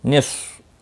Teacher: صاد مستعلیہ ہے، پر پڑھا جائے گا، اس کو ہلانا نہیں۔